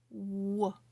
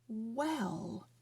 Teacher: now my tongue when i make this sound isn't doing anything my tongue is just resting on the bottom of my mouth but my lips are very rounded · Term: lip rounding sound